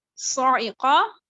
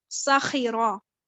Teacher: اب دیکھیں جو صاعقہ ہے اور جو ساخرہ ہے، صاعقہ میں آپ نے جو صاد کی آواز ہے اس کو موٹا رکھنا ہے، اور سین کی آواز کو جو ہے ساخرہ میں اس کو باریک رکھنا ہے